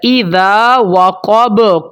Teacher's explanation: اذا وقب، قاف موٹا، با حروف قلقلہ میں سے ہے، اس کے اوپر قلقلہ ہوگا